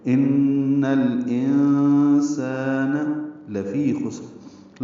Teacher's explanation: ان میں نون مشدد ہے، اس میں غنہ ہے، آواز ناک کے بانسے میں لے جائیں گے · نون ساکن کے بعد سین آنے کی وجہ سے اخفا ہے، حمزہ اقصی حلق سے ادا کریں گے واضح ، اور نون ساکن پہ اخفا ہوگا، اور الف مدہ ہے، · پڑھیں گے، ان الانسان لفی خسر، لام کو جلدی پڑھنا ہے، فی یا مدہ ہے، 2 حرکات لمبا ہے ، خسر میں خا پر ہے اور سین ساکن ہے، تیز